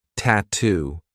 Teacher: Another word that I love for practicing the true T is tattoo. We have two true T sounds, T and then two.